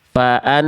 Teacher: Nun ketika bertasydid ya punya hukum namanya ghunah. Ghunah itu artinya dengung. dan ditahan dua harakat.